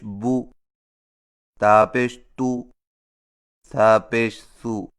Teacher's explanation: سیدھی پیش کی ادائیگی: سیدھی پیش حرف کے اوپر واو کی شکل کی مڑی ہوئی لکیر کو سیدھی پیش کہتے ہیں، اور سیدھی پیش ہونٹوں کو گول کر کے بغیر کھینچے اور جھٹکا دیے پڑھا جاتا ہے، جیسے با پیش بو، تا پیش تو، سا پیش سو۔ پیش میں چونکہ ہونٹ گول ہو جاتے ہیں اور ذرا سے آگے کو بڑھ جاتے ہیں، اس لیے اس کی آواز بھی قدر گول ہوتی ہے